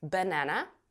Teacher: а вот два остальных слова первый и последний они у нас безударный и вот здесь у нас как раз появляется этот звук шва